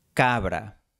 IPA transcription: ka.βɾa